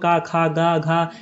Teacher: क ख ग घ ये सब उसका उच्चारण स्थान कंठ है